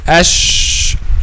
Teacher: The middle part of the tongue will go against the roof of the mouth, okay, but they will not meet completely, okay, which means it will be a space between the middle part of the tongue and the roof of the mouth. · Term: Sheen